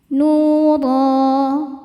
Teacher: Huruf ro dibaca tafkhim karena berbaris fathah tanwin, dibacanya tebal. Ro madnya ini mad iwad karena ada baris fathah tanwin yang diberhentikan.